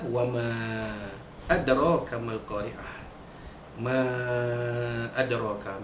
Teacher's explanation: Ayat ketiga, wa ma adraka mal qari'ah. Ma adraka, mim alif di atas ma bertemu dengan hamzah pada adraka, hukumnya mad jaiz munfasil, harus dibaca 4 atau 5 harakat